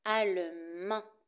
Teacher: Attention à la prononciation du masculin. On ne prononce pas le D.